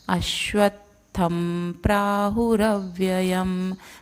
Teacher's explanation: अब यहाँ पे थ के बाद, थ के ऊपर जो अनुनासिक है उसका उच्चारण ये प पे डिपेंड करेगा, तो प फ ब भ म, लास्ट में म आता है, इसलिए थ के ऊपर जो अनुनासिक है उसका उच्चारण म रहेगा